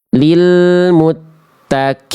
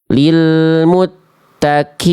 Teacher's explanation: Kenapa? Karena kof-nya jadi kaf ya